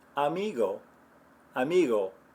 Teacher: you're making a little bit of a closure in the back of your throat it's almost like you're about to make the G sound without